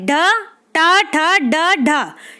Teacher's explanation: मूर्धन्य ध्वनियां हैं हमारी ट, ठ, ड और ढ